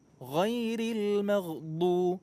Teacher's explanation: Huruf ghain itu ada di ujung kerongkongan. Ghain, kha, dekat dengan makhraj kha.